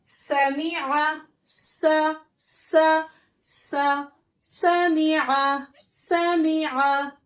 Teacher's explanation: ये हमारा बारीक हर्फ है, इसमें हमें मोटा नहीं करना है